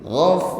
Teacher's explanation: Ditutup dengan huruf ra. Ya, ra-nya dibaca tafkhim, bunyinya tebal. Namun tetap ada getaran ya, atau sifat takrir.